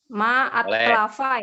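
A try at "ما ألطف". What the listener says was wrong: Jangan kebalik. Al-tofa. Ma al-tofa.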